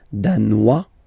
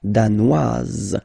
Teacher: Danois, don't pronounce the final S. Danoise, here you pronounce it.